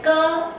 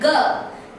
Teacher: velar sounds like ka and ga, as in back and bag